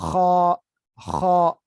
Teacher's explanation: یہ کیا ہے، یہ ادنا، یہ اوپر جو حلق کا اوپر والا حصہ ہے، یعنی زبان کے فوراً بعد جہاں سے گردن شروع ہوتی ہے وہاں سے یاد آتا ہے، خا، خا.